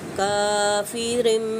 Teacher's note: ठीक है, काफिरिम, यहाँ पे इक़लाब का कायदा अप्लाई करेंगे, गुन्ना करेंगे। नून साकिन की आवाज़ को मीम के साथ चेंज कर दिया जाएगा